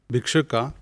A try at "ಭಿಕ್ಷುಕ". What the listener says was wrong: ಭಿಕ್ಷುಕ. ಭಿಕ್ಷುಕ ಅಂತ ಹೇಳಲ್ಲ, ಮಹಾಪ್ರಾಣ. ಅಲ್ಲ, ಭಿಕ್ಷುಕ ಅಂತ ಹೇಳಬೇಕಾದ್ರೆ ಭೀ ಮಹಾಪ್ರಾಣ ಆಗಿರಬೇಕು. ಇಲ್ಲೂ ಅಲ್ಪ ಪ್ರಾಣ ಇದೆ, ಬಿ.